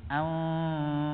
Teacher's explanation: Kadang dibaca wa bima anfaqu min amwalihim, kurang di gunnah atau samar yang disertai gunnah pada kata anfaqu wa bima anfaqu. Jadi nun sukun berhadapan dengan huruf fa itu dipraktekkan dengan dengung disertai samar. Kalau istilah hukum tajwidnya dibaca dengan ikhfa hakiki pada tingkatan ausat ya.